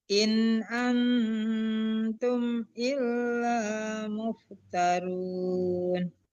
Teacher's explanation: jangan ditahan, tidak ada dengung di situ, itu izhar. Antum, annya baru dengung, innya jangan.